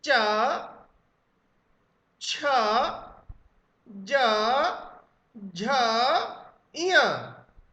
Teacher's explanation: जीभ उस खुरदुरे तालू पर लग रही है, रफ पैलेट पर लग रही है, जिसे तालब्य कहा जाता है, तालू कहा जाता है। · चा वर्ग का उच्चारण स्थान तालू होता है